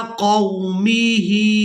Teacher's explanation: हा को खड़ी जेर की वजह से खींच कर अदा करेंगे।